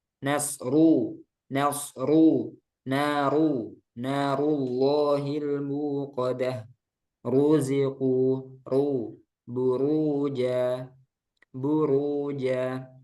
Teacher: keadaan yang keempat rnya domah ru ru ru ini tebal ru ro berharkat domah semuanya tebal